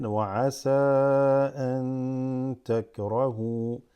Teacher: Because it's noon sukoon, noon sakina. It's a noon that has a sukoon followed by ta. So this slightly extends it. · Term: Ikhfa